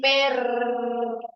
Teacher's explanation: la punta de la lengua choca varias veces en el alveolo, produciendo una consonante vibrante múltiple